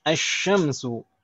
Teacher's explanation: Jadi langsung lamnya tidak terbaca, langsung idgham ke huruf syin. Asy-syamsu.